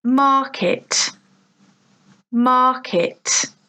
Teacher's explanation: So 2 syllables, market, but the stress, the emphasis is on the first syllable, market. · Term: stressed syllable